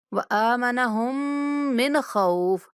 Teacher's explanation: نون پہ غنہ نہیں کرنا، نون پہ اظہار کرنا ہے، کیونکہ نون کے بعد حروف حلقی میں سے خا آ رہا ہے۔